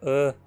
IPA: ə